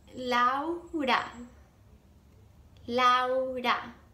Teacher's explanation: So if you're saying la hora, I'm gonna be like, what, you want the time or something? So definitely say lao together and put the emphasis on the lao.